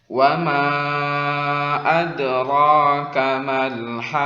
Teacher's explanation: Wa ma tanda alis artinya panjangnya lebih daripada 2. Di sini panjangnya 4 harakat karena ada mad tabi'i bertemu dengan hamzah di 2 kata. Ma 1 kata, adra 1 kata.